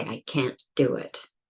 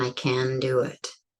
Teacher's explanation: The issue is that in English, often we will drop the T. You won't hear the T, but you will hear the stop.